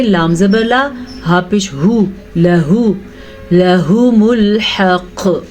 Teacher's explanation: لام کو لمبا نہیں کریں گے، لام پہ زبر ہے اسی لیے. ہا کو لمبا نہیں کریں گے، ہا پہ صرف اور صرف پیش ہے.